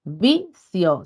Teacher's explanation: Vicio, sílaba tónica en vi. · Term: Palabra grave